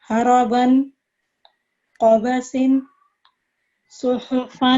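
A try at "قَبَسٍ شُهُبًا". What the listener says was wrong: गुन्ना की आवाज जो है 2 सेकंड की करें. पहले लफ्ज में थोड़ा सा ज्यादा 1.5 सेकंड कर रहे हैं, 2 सेकंड करना.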